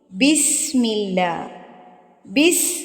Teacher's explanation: سین سیٹی والے حروف میں سے ہے، اس وجہ سے اس کو ہم نے مضبوطی کے ساتھ پڑھنا ہے